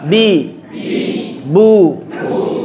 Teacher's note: Ya, ini ba, makhrajnya di dua bibir.